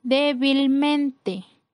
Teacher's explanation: La sílaba con mayor fuerza es antes de la antepenúltima sílaba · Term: sobre esdrújulas